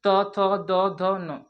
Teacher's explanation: दांत आपस में टच हो रहा है इसलिए दंत से उच्चारण हो रहा है